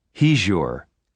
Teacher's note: When a word ends with a z sound and the next word begins with y, the combination of the two sounds changes to a zh sound.